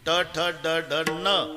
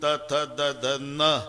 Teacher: नळ्याचा न उच्चारा त जीभ दाताला स्पर्श करणार बानाचा न उच्चारा अजिबात दाताला लागत नाही टाळूला इतक जवळ जवळच